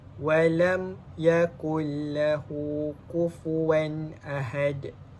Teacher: Daripada cara kita baca huruf mim tu keluar, dia memerlukan kita menggunakan kedua-dua bibir kita. Jadi cara bacaan dia dengan menjelaskan sebutan mim sakinah tanpa dengung. Jadi izhar syafawi ni dia tergolong dalam hukum mim mati, iaitu apabila huruf mim bertemu selain daripada huruf mim dengan huruf ba.